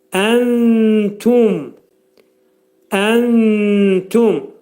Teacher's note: Nunu tənin məxrəcində gizlədirik sanki. T hərfi də eşidilir.